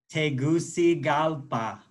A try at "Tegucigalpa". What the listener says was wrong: Yeah, it just, there's an L towards the end. Tegucigalpa.